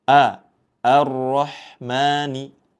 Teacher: A di awal dibaca tipis. Jangan sampai ikut dibaca tebal.